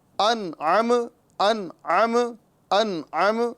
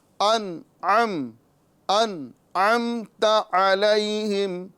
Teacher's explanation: پہلے حمزہ ہے اور بعد میں عین ہے اور میم میں قلقلہ سے بچنا ہے